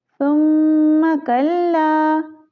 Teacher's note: सुम्मा, मीम मुशद्दद है तो मीम पे हम गुन्ना करेंगे